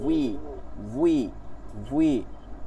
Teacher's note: দেখেন বা বলার মতন করে ঠোঁট গোল করবে, ওয়াও জবর ওয়াওজের উই, বাজের বি, আর ওয়াওজের উই। এইটা উই দিয়ে বলতে পারি ঠোঁট গোল করে, উই। আমরা বুয়ের উচ্চারণ শুধু পেশ দেওয়ার সময় করব।